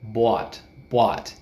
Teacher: you can hear it way in the back of the throat, right? Bought, bought. Your jaw also goes down very far.